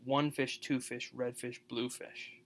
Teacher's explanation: stressed unstressed stressed unstressed stressed unstressed